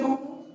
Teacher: पौपो बोलने में होठ सटाना पड़ता है, मुंह खोल के आप बोल नहीं सकते पौपो। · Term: स्पर्श व्यंजन